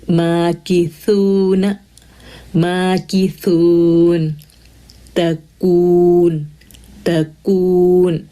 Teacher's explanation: تو یہ دیکھیں، اور پھر اس میں نا تھوڑا سا ہمس، اس کی صفت میں ہمس ہے، تو جب ہم جزم آ جائے گا کاف کے اوپر تو تھوڑی سی ایئر فلو ہم کو سنائی دے گا